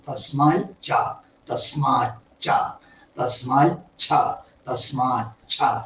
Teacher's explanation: തസ്മാൽ എന്നുള്ള തകാരത്തിന് ശേഷം ചവർഗത്തിൽ ച ഛ ജ ഝ ഈ 4 അക്ഷരങ്ങൾ എടുക്കുകയാണെങ്കിൽ അതൊക്കെ ദ്വിത്വം ആക്കി വേണ്ടു.